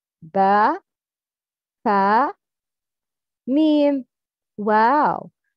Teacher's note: The lips is makhraj for four letters